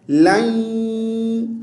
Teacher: لام نون یا زبر لین، بیچ میں نون ہے، اگر یا مشدد ہے تو لام کو جب یا کے ساتھ ملائیں گے تو آواز کو ناک میں لے جائیں گے، غنہ کریں گے، ٹھیک ہے. یہاں سے دیکھیے اللَّین، الَّی، لئی یہ بھی نہیں پڑھنا، الَّج یہ بھی نہیں پڑھنا.